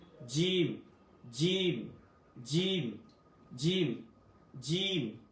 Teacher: জিহ্বা মাঝখান থেকে জিম উচ্চারণ হবে